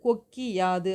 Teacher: கு அப்படிங்கிற எழுத்து வந்து கீ யா மாறும்போது அதனுடைய ஒரு மாத்திரை அளவுல இருந்து குறைஞ்சு அரை மாத்திரையா ஒலிக்குது